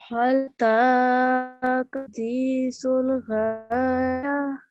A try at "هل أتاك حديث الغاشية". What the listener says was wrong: Okay, so this letter here, okay, you elongated it properly, but it's a thick sound. Ra. It's not ra, it's ra. So you have to make your mouth round. So, هل أتاك حديث الغاشية.